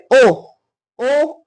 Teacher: कंठोष्ठ है ओ, ओ ओठों से आवाज, ओठ आपस में ऊपर उठते हैं और कंठ से आवाज आती है